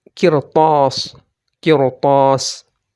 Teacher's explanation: ada ra sukun, sebelumnya qaf yang kasrah, dan setelah ra sukun itu ada huruf isti'la yakni ta. Maka dia dibaca tebal, tidak boleh tipis. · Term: ra yang tebal